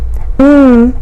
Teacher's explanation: the air is directed through the nose there are three nasals and they are all voiced the first is mm is a continuance sound which means that